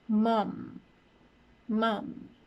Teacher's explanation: It is a bilabial sound. My lips are touching, so that would be it.